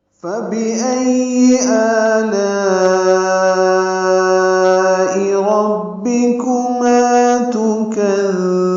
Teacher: حمزہ اقصی حلق سے ادا ہوگا ، حمزہ کو یا سے ملانا ہے، یا پر تشدید ہے،